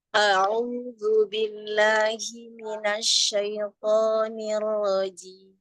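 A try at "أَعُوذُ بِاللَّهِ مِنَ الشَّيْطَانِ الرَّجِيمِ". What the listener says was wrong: Huruf shinnya tafasirkan lagi, Bun, sedikit.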